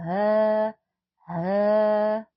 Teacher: ha yang berasal dari pangkal tenggorokan